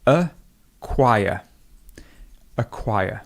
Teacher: we have a schwa, then we have the k sound, and we have the w sound